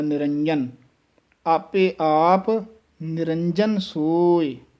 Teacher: ਨਿਰੰਜਨ, ਜੱਜਾ ਜਿਹੜਾ ਹੈ ਇਹਨੂੰ ਸ਼ੁੱਧ ਬੋਲਣਾ ਹੈ। ਥੋੜ੍ਹਾ ਜਿਹਾ ਜੱਜੇ ਨੂੰ ਕੱਸ ਕੇ ਬੋਲਾਂਗੇ ਤਾਂ ਇਹ ਸ਼ੁੱਧ ਬੋਲਿਆ ਜਾਏਗਾ, ਨਹੀਂ ਤਾਂ ਯਈਆ ਬੋਲਿਆ ਜਾਏਗਾ।